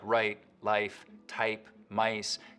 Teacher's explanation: the starting point of words like right life type mice can get raised too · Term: canadian raising